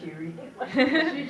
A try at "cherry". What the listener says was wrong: 2 E's instead of 2 R's.